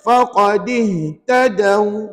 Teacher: Tadaw tu pendek aja, jangan baca 2 harakat, tak cukup syarat. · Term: waw mati